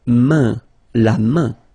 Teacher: So it's really a nasal, it goes in your nose